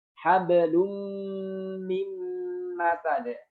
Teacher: Gunnah itu suara dari hidung, ya. Huruf mim disertai dengan gunnah memanjang, sama. Dua-duanya disertai dengan gunnah memanjang.